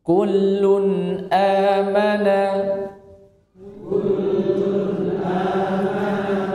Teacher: Kaf hameskan. Huruf kaf itu memiliki sifat hames. Hames itu maknanya keluar nafas.